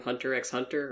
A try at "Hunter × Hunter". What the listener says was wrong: It's Hunter Hunter. The X. There is no pronunciation of the X, it's just there for the look.